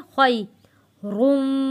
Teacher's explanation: लैलतुल क़द्री खैरुम, खैरुम, या साकिन से पहले ज़बर है, खई पढ़ेंगे, खई, खौ को मोटा पढ़ेंगे। खई रुम, मीम के ऊपर तशदीद है, गुन्ना अदा करेंगे।